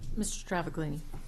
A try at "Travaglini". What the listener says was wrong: You pronounced it pretty well. It's actually a silent G, Travellini.